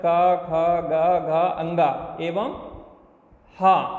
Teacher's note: आ का वर्ग, क ख ग घ अंगा एवं हा कंठ से बोले जाते हैं।